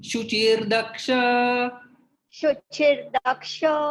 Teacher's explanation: तो यहाँ पर संधि हो जाती है, शुचि और दक्ष के बीच में विसर्ग का रेफ बन जाता है।